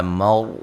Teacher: را کو موٹا ادا کریں گے ، را ساکن سے پہلے زبر ہے، یا مد اصلی ہے،